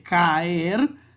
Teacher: cuando hay dos vocales abiertas distintas como en el caso de caer que la a es fuerte y también la e la separamos tenemos dos sílabas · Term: hiato